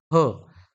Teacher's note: घर्षक आहेत त्यानंतर एक आहे तो म्हणजे महाप्राण त्याला नाव आहे ह उच्चार करताना फुफुसातील हवा जोराने बाहेर फेकली जाते